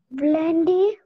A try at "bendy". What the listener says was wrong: Bendy. It's not blendy, it's bendy. Bendy.